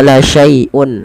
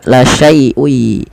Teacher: mengidgamkan memasukkan tanwinnya kepada huruf ya